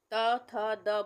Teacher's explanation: जीभ हमारी कहाँ टच हो रही है, ऊपरी दांतों के जड़ों से, यानी कि जहाँ से मसूड़ों में से दांत निकल रहे हैं वहाँ टच हो रही है